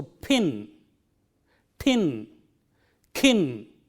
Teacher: They just use unaspirated forms, but if you want to make your speech clear and effective, you have to use the aspirated P, T and K sounds in the right position.